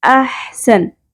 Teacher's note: ح کو ہا کی طرح نہیں پڑھنا جیسے ہم اردو میں پڑھتے ہیں